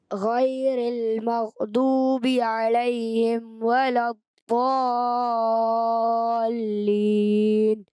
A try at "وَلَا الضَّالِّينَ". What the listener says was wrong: تھوڑا مد، یہ بڑی مد ہے، 6 حرکات اس کو کھینچنا ہے، 3 الف، تو کوشش کریں اور زیادہ کھینچیں.